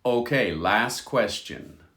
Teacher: the t disappears in last